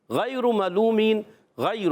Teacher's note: غیر ملومین، غیر، غین یا زبر غی، یا لین ہے، نرمی سے ادا کریں گے. غین حلق کے اوپر والے حصے سے ادا ہوتا ہے